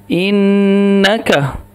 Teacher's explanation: انک نون کو ایک سیکنڈ کے لیے ناک میں آواز رکھیے